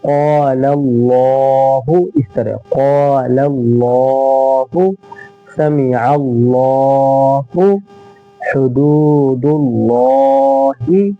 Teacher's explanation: لفظ اللہ سے پہلے زبر یا پیش ہو تو لفظ اللہ کے لام کو پر پڑھیں گے، یعنی اللہ کے لام کو ہم موٹا کر کے پڑھیں گے